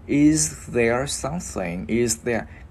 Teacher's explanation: Cái chữ z này mình luyến qua chữ there luôn cho nó mượt nha